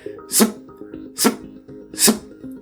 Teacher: That sound you're hearing is my lips closing really tight